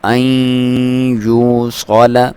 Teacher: ناک میں سے آواز نکالیں گے، غنہ کریں گے، اور اس کی لمبائی ایک الف کے برابر ہے ، صاد کو موٹا پڑھیں گے، وَيُفْسِدُونَ سین کو باریک سیٹی